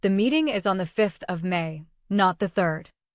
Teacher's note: Fifth and third carry the contrast so they receive stronger stress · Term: correction stress